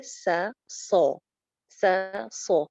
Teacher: سین کے مقابلے میں صاد جو ہے اس کی آواز موٹی ہے، سا سو، سا سو.